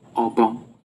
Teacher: spoken with the two syllables at the same pitch level